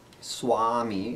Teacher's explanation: It's somewhere between an English W and an English V sound. And it's never as hard as V in English, but sometimes it sounds more like a V when it's said in Sanskrit. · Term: va